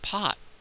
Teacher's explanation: we'll sometimes not release the air at the end of the T at all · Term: closed off T